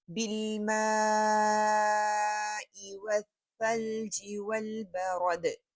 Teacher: بارد را موٹا پڑا جائے گا اور دال جو ہے وہ کلکلا ہوگی۔